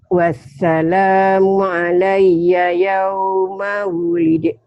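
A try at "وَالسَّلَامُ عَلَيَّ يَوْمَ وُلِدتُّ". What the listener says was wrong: dalnya hilang. Dalnya hilang. Jangan wulid tuh. Ini diidghamkan ya. Dalnya masuk ke huruf mati. Wulid tuh.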